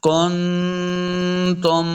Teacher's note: نون ساکن کے بعد تا حرف اخفا سے آ گیا تو یہاں پہ ہم نے غنہ کر کے پڑھنا ہے